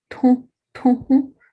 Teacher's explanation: So we can see that the aspiration of T is triggering the nasalization of U